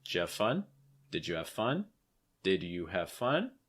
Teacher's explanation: Your stress, in case you haven't noticed, is going to be on fun. So making sure that that's the word that you're emphasizing, has that schwa sound, so it's not fa, it's more f.